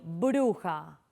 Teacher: a veces se le llama la bilabial porque miren que uno junta los labios para pronunciarla